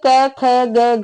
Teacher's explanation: क ख ग घ यह सारे आप कंठ से ही बोले जाएंगे